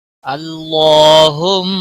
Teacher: یہاں پر زبر ہے، اللہ کے لام کو موٹا پڑھیں گے، اس کے اوپر کھڑی زبر ہے، ایک الف کے برابر کھینچ کر پڑھیں گے۔